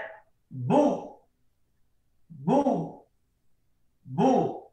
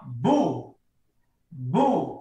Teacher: ketika huruf berharokat dhammah, mulut harus monyong atau manyun. Contohnya bu, benar-benar monyong, bu, seperti itu.